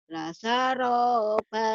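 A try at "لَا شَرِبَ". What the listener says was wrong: Shin. La syaraba. Shinnya hutang ya. Hutang shin. La syaraba.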